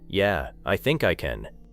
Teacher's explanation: "Yeah, I think I can." The words are still positive, but the pause, the slower delivery, and the weaker ending may make you wonder whether the person is completely sure